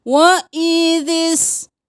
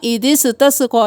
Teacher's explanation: وَإِذِ اسْتَسْقَى اب یہاں پہ سین کو ساکن ہی رکھنا ہے, قلقلہ نہیں کرنا